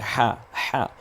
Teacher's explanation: তারপরে যে অক্ষরটা আছে, এটা হা আছে, হা, হা, এই হাটা কণ্ঠনালীতে চাপ দিয়ে হা